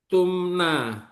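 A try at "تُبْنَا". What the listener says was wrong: Bukan pakai mim. Tubna. Tubna.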